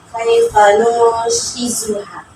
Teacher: Kalau di tajwidnya ini nun mati ketemu syah, seharusnya ini ikhfa. Bacanya didengungkan.